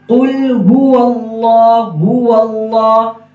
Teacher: آگے ہا پیش ہو، ہا کا مخرج یہ ہے کہ سینے کی طرف جو گلے کا حصہ ہے وہاں سے ہا ادا ہوگا، زیادہ زور سے نہیں ادا کرنا، ہو اللہ زیادہ زور سے نہیں کریں گے، زیادہ مبالغہ بھی نہیں کرنا۔